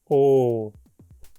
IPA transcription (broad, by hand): oː